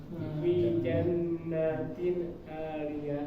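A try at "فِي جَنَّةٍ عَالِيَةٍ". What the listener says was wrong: Nanya jangan dibiarkan. Jadi langsung pindah. Karena setelah huruf na ini gak ada yang bikin panjang, gak ada alifnya.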